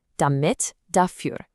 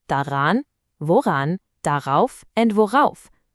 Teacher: Since they start with vowels, bam! That r pops in there to make it sound smooth